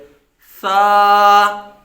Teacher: زبان کا سیرا اور اوپر کے دانتوں کے اندرونی کنارے، وہاں سے یہ ادا کریں گے